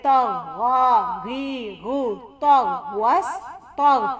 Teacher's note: غین کی آواز واضح گلے سے آنی چاہیے